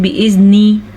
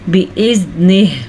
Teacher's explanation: वक्फ़ की वजह से आखिरी हर्फ साकिन हो गया